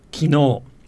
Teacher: in standard japanese is kino with the accent on the no